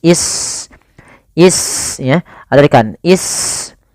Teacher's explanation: Wa Ismailu, Ismailu, nah di sini sunnya sukun, yaitu kita kenal, ya, sin itu punya sifat hamas, yaitu mengalirnya nafas